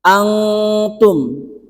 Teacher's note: nun mati bertemu dengan tak itu hukumnya adalah ikhfa Hakiki itu samar